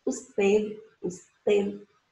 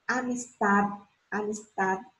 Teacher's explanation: o D é um D mudo, mas ele é pronunciado de forma leve e relaxada. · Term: demudo